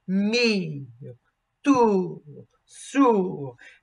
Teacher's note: you sing on the first vowel for a majority of the duration of the note, and then you drop in the second. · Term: diphthong